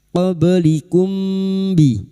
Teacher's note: Mim sukun bertemu ba ikfa syafawi. Mim sukun dibaca samar dan mendengung selama 3 harakat.